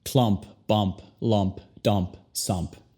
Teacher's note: la U que se convierte al sonido schwa